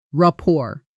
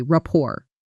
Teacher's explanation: The final T is silent. So, it sounds like rapport, not report.